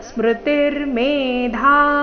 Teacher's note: ಸ್ಮೃತಿರ್ಮೇಧಾ ಧ ಮಹಾಪ್ರಾಣ ದೀರ್ಘ